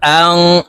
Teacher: এই নুন সাকিনকে নাকের ভিতরে লুকাইয়া গুন্নার সহিত পড়ব।